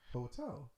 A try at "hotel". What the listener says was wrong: You just said H. You did. Hotel.